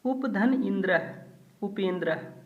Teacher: उप में ह्रस्व आ छुपा है और इंद्र का ई माने आ और ई मिलकर के ए बन गया है तो मात्रा के रूप में ए है उपेंद्र। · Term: गुण संधि